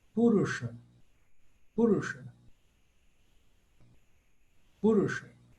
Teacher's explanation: esse S com um pontinho em cima, nós vamos fazê-lo mais cerebral.